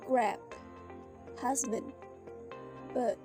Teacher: The b sound is voiced. The vocal cord vibrate while producing it, and it is the counterpart to the unvoiced p sound. To create the b, air is briefly prevented from leaving the vocal tract by closing the lips. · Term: Bilabial b